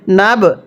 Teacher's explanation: বায়ে যদি সাকিন হয় কলকলা করে পড়তে হয়।